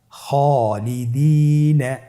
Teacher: খায়ের পরে যেহেতু আলিফ হরফটি রয়েছে তাহলে আপনার আলিফ হরফটিকে মোটা করে পড়তে হবে